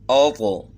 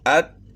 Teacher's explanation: تو موٹا کرنا ہے اس کو، لیکن حروف قلقلہ میں ہونے کی وجہ سے اس کو ہلا کر پڑھنا ہے، اور تا کو ہلا کر نہیں پڑھنا ہے، اس میں قلقلہ نہیں ہوگا